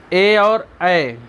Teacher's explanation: जो ए और ऐ है, दीर्घ स्वर में ए ऐ आते हैं ना, तो ये इनका उच्चारण स्थान कंठ और तालु, माने कि ये गले और तालु दोनों से बोले जाते हैं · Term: कंठ तालु